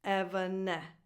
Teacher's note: It goes on: Like “adolescence”, “luminescence”, “effervescence”: So [ɛ] as in the word “bed”: The second vowel is a schwa, it's not defined because the stress is on the following syllable: Again an [ɛ] sound like in the word “bed”, like the first one: So this last syllable is unstressed and so the vowel is a schwa: Did you enjoy today's video?